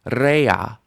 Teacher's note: Rea. Stress under the resh with the tzerei.